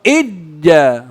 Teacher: إذ جاء تدغم الذال في الجيم عند بعض القراء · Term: إدغام متقاربين